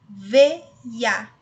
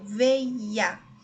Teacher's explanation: Eu tenho aqui um ditongo, porém ele não é nasal, ele é oral. Veia. O som sai somente pela boca. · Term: ditongo oral